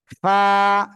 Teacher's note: নিচের ঠোঁটের পেট সামনের উপরের দুই দাঁতের আগার সঙ্গে লাগিয়ে হালকা বাতাস বের করে এক আলিফ টেনে আমরা এই অক্ষরটি উচ্চারণ করব